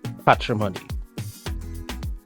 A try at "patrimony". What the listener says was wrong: P-A-T. Not patch your money, patrimony.